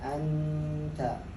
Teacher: Iya bunyinya di nun, lidahnya sudah ke huruf ta. Maka setiap ikhfa itu akan berbeda bunyinya, anta.